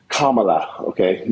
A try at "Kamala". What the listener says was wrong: Kamala, not with that emphasis, just say Kamala.